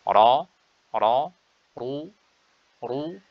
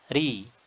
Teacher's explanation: huruf ra yang tebal itu terucapkan dengan adanya taqa'ur, adanya cekungan pada tengah lidah, dan tadayyuqun, penyempitan ya pada tenggorokan, yaitu dengan terangkatnya bagian belakang lidah. Ini hal yang tidak ada pada huruf ra yang tipis seperti ini, tidak ada ya. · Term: ra tebal